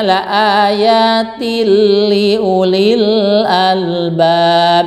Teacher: Idgham bila gunah itu adalah yaitu ada tanwin atau nun mati menghadapi lam dan ro ya, ayatil dibacanya. Jadi tanwinnya masuk ke lam ya. Itu tanwinnya menghadap ke lam, jadi la ayatil gitu kan.